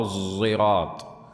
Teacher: الصاد التي يخالط لفظها لفظ الزاي نحو الزراط قصد السبيل